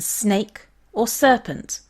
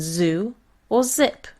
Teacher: the same as their Latin letters these are the alveolar fricatives is the hissing sound in snake or serpent and this is the buzzing sound in zoo or zip